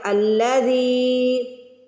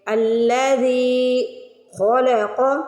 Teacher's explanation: یہاں پہ ہم لگاتے ہیں الف پہ زبر، تو یہ بن گیا الذی. زیر کے بعد یا ساکن آ رہا ہے تو زی کو کھینچ کے ادا کریں گے. الذی خلق، خا اور قاف کو موٹا پڑھیں گے.